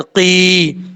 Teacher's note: قاف کے بعد جو یا آ رہا ہے یہ یا مدہ ہے کیونکہ یا ساکن سے پہلے جب زیر ہو تو یا مدہ ہوتا ہے. ایک الف کی مقدار اس کو لمبا کر کے پڑھیں گے